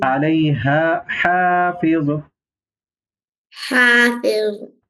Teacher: اس ہا کو گلے سے نکالنا ہے، ٹھیک ہے، اور اس کو باریک پڑھنا ہے، اس کو موٹا.